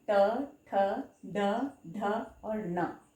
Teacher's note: मूर्धन्य यानी हमारा जीभ हमारे तालु के ऊपर वाले भाग को छूता है।